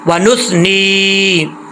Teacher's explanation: نون کے آگے نون زیر یا نی، 1 الف کی مقدار اس کو لمبا کریں گے